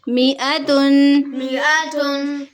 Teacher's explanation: میم الگ پڑھی جائے گی اور حمزہ الگ